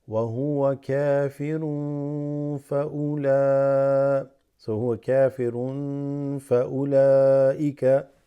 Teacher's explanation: Tanween followed by fa. Noon sakina followed by fa makes that slightly stretched.